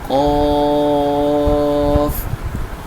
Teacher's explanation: زبان کی جڑ اور تالو کے نرم حصے سے زبان تھوڑی سی اٹھ جائے گی